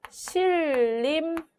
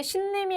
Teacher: 자, 그 다음에 신림이 아니라 얘는 실림 이렇게 발음을 해야 옳습니다. 니은과 리을이 만나서 니은이 리을로 발음되는 것을 살펴볼 수 있죠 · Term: 유음화